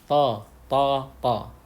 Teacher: ini bukan huruf bibir dan bibir tidak perlu bergerak ketika mengucapkan huruf tho cara yang benar supaya terdengar tebal adalah dengan mengangkat lidah seperti namanya Istia ala artinya lidah terangkat jadi ketika ucapkan huruf